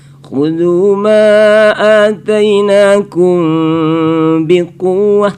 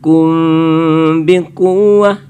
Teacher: Mimati bertemu ba. Ya, itu adalah ikhfa syafawi ya. Nah, situ ditahan dia.